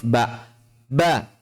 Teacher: Jadi jika kita menutup apa yang Anda sebut hidung kita, artikulasi ba masih tetap keluar.